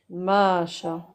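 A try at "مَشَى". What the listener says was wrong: Non. Prolonge shin. Non, tu dis ma. Ma.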